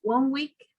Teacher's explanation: the n sound will become an m sound